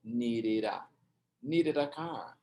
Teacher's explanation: a gente pronuncia o D com som meio de R